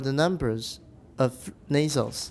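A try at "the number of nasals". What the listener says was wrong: Good, except for no S, and also it's too emphatic on number.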